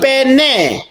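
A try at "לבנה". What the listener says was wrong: Nah betul, bukan lipene, livne karena ini nggak ada dagesnya di tengah. Ya ampun, ini nggak ada dagesnya. Kalau ada dagesnya baru dibaca P.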